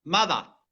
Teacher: They say mother. No R on the end. That's a sure sign of African English.